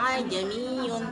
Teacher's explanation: Tashil yaitu hamzah kedua dibaca pertengahan antara alif dan hamzah